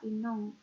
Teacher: dalam bahasa Aceh berupa inong atau perempuan dengan penggantian vokal A menjadi vokal O